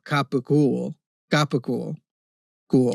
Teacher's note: a lot of C's in the Neapolitan dialect are pronounced as G's